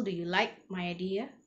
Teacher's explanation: you get to see there's a falling intonation okay on the last syllable